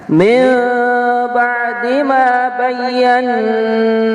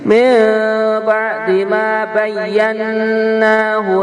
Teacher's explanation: apabila nun bertasydid bacaannya adalah gunnah, mendengung juga